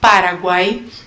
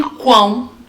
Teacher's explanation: Então, eu tenho semivogal, vogal e semivogal, E em quão, eu já vou ter também a semivogal, a vogal e a semivogal, porém, diferente de Paraguai. Paraguai, todos os sons saem só pela boca, então vão ser só orais, enquanto em quão eles vão ser nasais também.